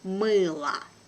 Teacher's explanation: letter O here is without accent. So it has a weak position and I pronounce it like A.